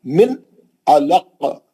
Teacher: نون ساکن کا اظہار حلقی حرف عین. جلدی پڑھیں گے نون کو، من علق، پھر خاف پہ خلخلہ کبرا کریں گے، عین صحیح پڑھیں گے، علق تھنٹر آف دا تھروٹ، اور خاف پہ خلخلہ کبرا، اور خاف جو مستعلیہ کا ہے موٹا خلخلہ.